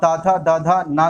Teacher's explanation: दांत से आपकी जीभ टकराएगी, तो ये आपका दंत हो गया